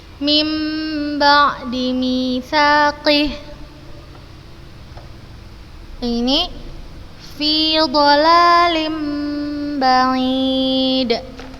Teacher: Kita ubah suaranya menjadi suara mim dengan tempo gunnah yang dipanjangkan.